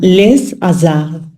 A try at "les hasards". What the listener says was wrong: Attention, il ne faut pas entendre de S, hein. Les hasards. C'est pour ça, tout à l'heure, quand je disais une pause ou une barrière, en fait, il faut bien faire en sorte qu'il n'y ait pas de S, d'accord?